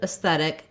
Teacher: this word has second syllable stress, so that AE or letter E at the beginning is a short, unstressed syllable. It has the red tent vowel, sounds like S, S.